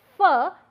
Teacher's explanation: the lower lip is coming in contact with the front teeth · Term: labio Dental